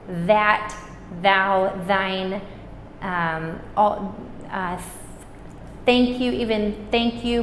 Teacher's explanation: my tongue is between my teeth